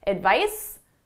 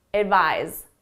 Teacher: the S is at my lips it's unvoiced the the Z is in my throat my vocal chords are engaged